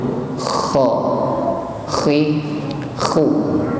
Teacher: kho diucapkan dengan tafkhim tebal dan ada sedikit diiringi oleh bunyi apa itu, ngorok gitu. Seperti kalau orang tidur itu mendengkur, kho, khi, khu.